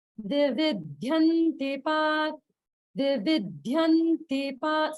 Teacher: the ti should be the lower swara